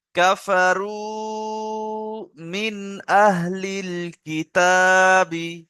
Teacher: জাহির করে পড়তে হবে হ্যাঁ, কায়দা গুণে একটু খেয়াল রাখতে হবে, নুন সাকিনের পরে হামজা আসছে, তাহলে কি করে পড়তে হবে? বিনা গুণনায় জাহির করে